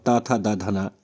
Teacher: ता था दा धना ये दंत ध्वनियों की श्रेणी में आते हैं